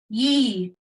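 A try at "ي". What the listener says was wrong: Not ye. So you're partly correct. You're mixing it up a little. It's not ye, it'll just be e.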